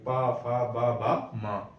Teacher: पा फा मतलब ओठ से बोलेंगे, जीभ नहीं लगेगी इसमें, ओठ, ओठ से आवाज आएगी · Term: ओष्ठ